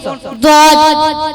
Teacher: दाद मखरिज क्या है? जबान की करवट और ऊपर के दांतों की जड़ से अदा होता है